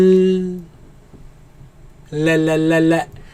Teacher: the tongue is placed right after the roots of the teeth, exactly where the gums begin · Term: lam sound